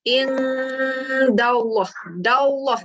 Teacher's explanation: Baris atas jumpa perkataan Allah, tebalkan. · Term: bacaan tebal